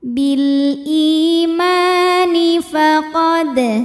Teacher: huruf dal dihukumi dengan qalqalah sughra karena huruf qalqalah ini sukunnya sukun asli dan ada di tengah bacaan, maka dibaca dipantulkan dengan pantulan yang kecil.